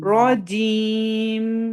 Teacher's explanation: أعوذ بالله من الشيطان الرجيم और रा थोड़ा हैवी होगा, रा पे जबर है, हैवी होगा। الرجيم और जब मीम पे रुकते हैं ना तो थोड़ा सा नाक में आवाज होल्ड करें